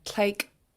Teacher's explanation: it's a pinched K at the end. It's not rounded. You don't have any pinched TL, but it's a pinched K at the end.